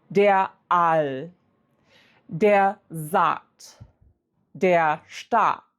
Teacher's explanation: When you encounter a Doppel A in German, it should mean you pronounce that with a long A.